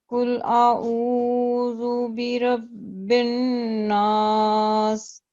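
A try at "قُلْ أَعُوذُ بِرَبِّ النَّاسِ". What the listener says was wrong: रॉ को thick करते हैं रॉ को थिक करना है, जरा मोटा पढ़े, इसको भर के पढ़े।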